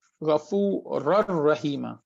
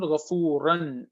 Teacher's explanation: It's not Ghafuran. The noon sound is gone, the sifa is gone. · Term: idgham without gunna